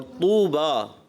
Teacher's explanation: اور طوبیٰ، تو کو آپ نے پر کرنا ہے. یہاں تھوڑا تو کی ادائیگی صفت استعلاء.